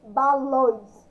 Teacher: Também consigo identificar o som nasal aí que sai pelo nariz.